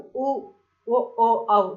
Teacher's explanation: வாய் திறக்கும் முயற்சியுடன் இதழ்களை குவிப்பதால பிறக்குது